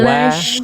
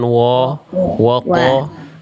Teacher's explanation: Jelaskan tunaikan itmamul harokat. Sempurnanya harokat fathah buka, tipiskan wawunya wa.